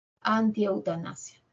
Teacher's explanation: Que es un prefijo que significa negación, ¿no? Anti termina en i, se junta con eu y forma un triptongo, cerrada, abierta, cerrada